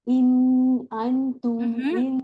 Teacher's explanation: पहला इन जो है इजहार के साथ, आगे हमजा है ना